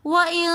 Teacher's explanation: نون ساکن کے بعد اخفا کے 15 حروفوں میں سے کاف آ رہا ہے تو اس لیے ہم یہاں پر غنہ کر رہے ہیں